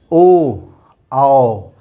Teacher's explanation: हवा तो यहाँ से कंठ से निकली और डायरेक्ट आके हमारे जो है ओंठ से टच होते हुए बाहर निकल रही है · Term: कंठ्योष्ठ